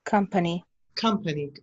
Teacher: It's more like an A. The schwa sound is closer to the A than the O.